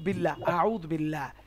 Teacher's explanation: আল্লাহর লামের পূর্বে যদি জের থাকে তাহলে আল্লাহর লাম পাতলা হবে বা বারিক হবে